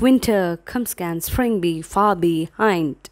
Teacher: unstressed syllable followed by a stressed syllable